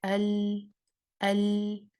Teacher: اپنی جو نارمل اس کا پیسج تھا ایگزٹ کا، وہاں سے نکلنے کی بجائے یہ سائڈ روٹ سے نکل رہی ہے آواز. ٹھیک ہے، سائڈ سے نکل رہی ہے. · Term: انحراف